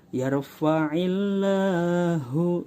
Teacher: sebelum huruf lafaz Allah ada harokat kasroh, dibaca tarakik atau tipis.